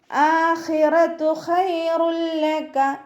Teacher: തെൻവീനിന് ശേഷം ലാമ് വന്നു. അപ്പോൾ ഇദ്ഗാം ബിലാഉന്നെയാണ്. മണിക്കാതെ ലയിപ്പിച്ചു കൊടുക്കുക